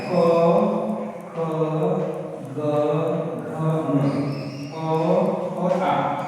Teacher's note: क वर्ग के सारे अक्षर ह और स इनका उच्चारण स्थान कहां से होता है कंठ से होता है तो क वर्ग में क्या होगा ऐसे होता है क ख